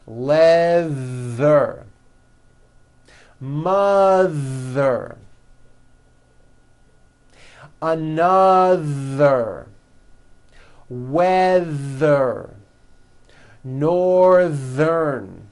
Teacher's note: Stick out your tongue and make a strong vibration. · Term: voiced TH sounds